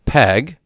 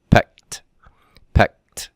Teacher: the D partially assimilates to the T sound by unvoiced or devoicing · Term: partial assimilation